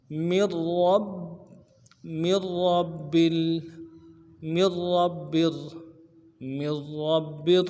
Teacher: میم کو آگے را کے ساتھ ملانا ہے، نون نہیں پڑھیں گے ، را کے اوپر تشدید ہے، زور دیں گے، را کو